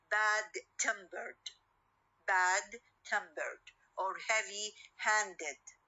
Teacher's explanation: adjectival first element and the ed morpheme at the end okay we will have uh the stress on the second part or the second word